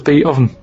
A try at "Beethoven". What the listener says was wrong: No, you said beat. Bait. Beat Oven. It's not Beethoven.